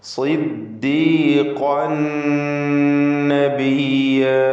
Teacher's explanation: ഖാഫിൻ്റെ തൻവീനിനെ ശേഷമുള്ള നൂനിൽ പൂർണ്ണമായും ലയിപ്പിച്ച് മണിക്കണം. ഇദ്ഗാം ബിഗുന്ന കാമിൽ. · ഖാഫ് ഇസ്തിഅലാഇൻ്റെ ഹർഫാണ്, പൂർണ്ണമായ തഫ്ഖീം. ഖാഫിൻ്റെ തൻവീനിനെ ശേഷമുള്ള നൂനിൽ പൂർണ്ണമായും ലയിപ്പിച്ച് മണിക്കണം.